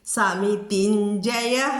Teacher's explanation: സമിതിഞ്ജയഹലെ തീ ദീ ആയിട്ട് ഉച്ചരിക്കരുത്, താ തന്നെയാണത് തീ. സമിതിഞ്ജയ ശ്രദ്ധിക്കണം കേട്ടോ.